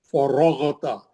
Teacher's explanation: فَإِذَا فَرَغْتَ فَانصَبْ. فرغت، را بھی موٹا، غین بھی موٹا، غین مستعلیہ کا ہے، را پہ زبر ہے موٹا